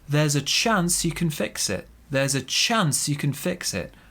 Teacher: big stress on chance there